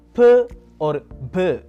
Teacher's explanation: when you press your lips together and release, you produce sounds like p or b